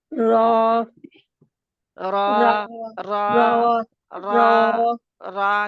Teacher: ज़ुबान 4 दाँतों के ऊपर वाले हिस्से में नहीं जड़ों में दाँत की गम लाइन पे